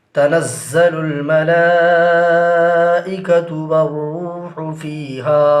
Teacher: را حروف شمسی ہے لہٰذا لام کو نہیں پڑھیں گے بلکہ واو کو را سے ملا کر پڑھیں گے